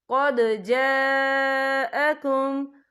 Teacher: یا دیکھیں قد، یہاں دال ساکن ہے، تو یہاں پر کلکلہ ہوگا، اور آگے دیکھیں جا، یہاں خالف سے پہلے زبر ہے، اور اس پر مد بھی ہے، یہ مد جو ہے مد متصل ہے، اس کی مقدار 4 حرکت کے برابر ہے، تو ہم اسے 4 حرکت کے برابر کھینچ کے پڑھیں گے.